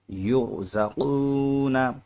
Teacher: یہاں پر را ساکن سے پہلے پیش ہے اس لیے را موٹا ہوگا